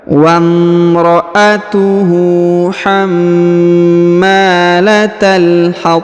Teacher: huruf mim ditahan dan ditekan kemudian dipanjangkan dua harakat